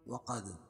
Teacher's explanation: وقد دال پر قلقلہ کیونکہ جزم ہے اور یہ حروف قلقلہ کے 5 حروفوں میں سے ہے.